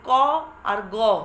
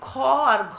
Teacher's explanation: প্রথম ও তৃতীয় বর্ণ মানে ক আর গ, এখানে শ্বাসবায়ুর অল্প প্রাধান্য আছে, কিন্তু খ আর ঘ শ্বাসবায়ুর প্রাধান্য থাকে। তাহলে প্রথম ও তৃতীয় ব্যঞ্জন বর্ণগুলিকে বলা হয় অল্প প্রাণ ব্যঞ্জন, আর দ্বিতীয় ও চতুর্থ ব্যঞ্জনকে বলা হয় মহাপ্রাণ ব্যঞ্জন।